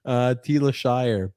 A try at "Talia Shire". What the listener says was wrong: Talia Shire, not Telia. Talia.